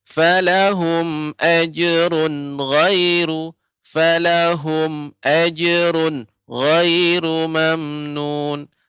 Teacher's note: Padahal tanwin bertemu dengan gha adalah izhar. Maka tidak boleh juga lama.